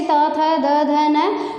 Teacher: ऐसा लग रहा है कि ये सब हमारे दांतों से टकरा रहे हैं बोलते समय, जो हमारी जीभ है वो दांतों से टकरा रही है।